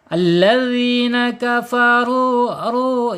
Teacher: ru ini dibaca tebal ya tebal karena harakatnya domah